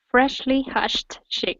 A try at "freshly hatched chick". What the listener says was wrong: Good. There you go.